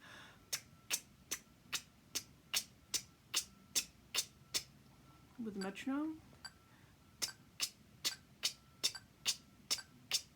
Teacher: the tongue function just as a valve so it's like this you can hear the little bursts of air as I release the T or release the K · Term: TK sound